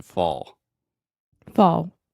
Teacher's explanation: the ah combined with the dark l sound almost makes the same sound as the all so fall fall yeah it's not totally like fo but you